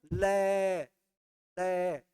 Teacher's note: बना है पार्श्विक पार्श्व का अर्थ क्या होता है बगल अर्थात वह वर्ण जिसका उच्चारण करते समय स्वास वायु जीवा के दोनों तरफ बगलो में दौड़ती है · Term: पार्श्विक वर्ण